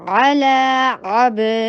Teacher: با کے پر قلقلہ، با کی آواز باؤنس ہوگی